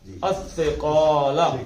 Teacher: زبان دانتوں کے ساتھ لگا کے الثقال، سیٹی کی آواز نہیں ہے